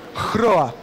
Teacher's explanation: você aspira o H e depois você vibra o R